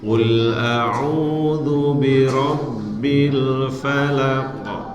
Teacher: Yang falak pertama itu tidak terlalu tebal karena qafnya kasroh.